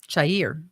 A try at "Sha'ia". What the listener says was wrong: Sha'ia. There's no R.